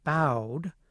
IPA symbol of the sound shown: aʊ